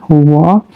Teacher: ऊपर के दांत निचला ओष्ठ से करते हैं व, और मूर्धा भीतर की छत का अगला भाग मूर्धन्य श।